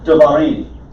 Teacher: when you make it davarim, now you have 3 syllables, and you have to hurry through the first syllable. So this comments gets reduced to a shavah because it is in the 3rd syllable from the accent.